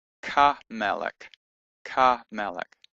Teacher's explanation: And just as in the other examples, if we add the definite article the letter hey, with the petach under it in this example, the hey gets absorbed when we add the kaf, and the kaf takes on the patach of the hay. So Ha-Melech, the king, Ha-Melech, the king, becomes Ka-Melech, Ka-Melech.